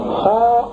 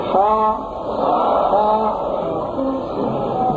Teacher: خا ادا کرتے وقت ہونٹوں کو گول نہیں کرنا ہے